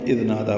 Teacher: اذ نادا میں دال نرمی سے ادا ہوگا، نادا دونوں کو 2 حرکات لمبا کرنا ہے برابر